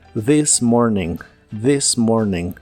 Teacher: la th de This es la versión que suena como una d vibrante